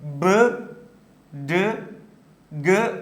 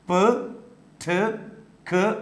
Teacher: ബ് ഡ് ഗ് ആർ voiced കോൺസോണൻസ് while പ ട ക് ആർ വോയിസ്ലെസ് കോൺസോണൻസ്